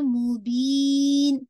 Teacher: بی کو stretch کرتے ہوئے اور لاسٹ میں نون کا نیزل ساؤنڈ ایڈ کریں گے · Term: مد العارض للسکون